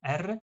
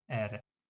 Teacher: We have two R sounds, like the trill, which is the R, and we have just the tap